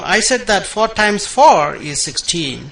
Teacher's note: remember that times you're emphasizing that multiplication is different from addition